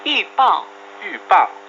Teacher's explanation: 预 the fourth tone and 报 also the fourth tone.